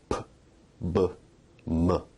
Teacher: Bilabial sounds are produced with both lips